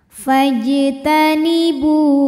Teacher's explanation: huruf Qalqalah yaitu Jim yang sukunnya asli dan ada di tengah bacaan maka di baca memantul dengan pantulan yang kecil